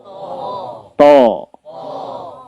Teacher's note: Kalau to, nah itu perlu ada hal yang kita bentukkan, sengajakan, yakni dengan mengangkat lidah belakangnya.